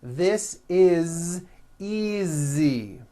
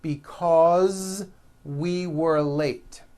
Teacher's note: again the s is like a voiced z